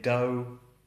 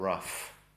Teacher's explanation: If it's a long O-U vowel, a diphthong, so you have O or ow, then the GH is completely silent